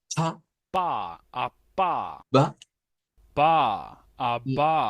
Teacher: Su posición es bilabial, pero su forma de articulación o su manera de articulación, estos se llaman plosive